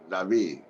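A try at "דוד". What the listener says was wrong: Dawid. Yeah, Dawid. This is a W. Dawid. And that's an I. And then that's a D on the end. Dawid. Dawid.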